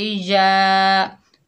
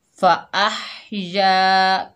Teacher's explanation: अह फ़अह, या के ऊपर ज़बर, आगे अलिफ खाली है, ये या मद्दा है, एक अलिफ की मिकदार खींचकर पढ़ेंगे